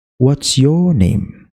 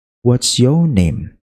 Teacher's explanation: habis ditekan di suku kata dua terakhir, kita lepaskan. Maka otomatis itu yang terakhir bakalan turun.